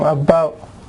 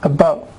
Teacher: Stop T, schwa, about.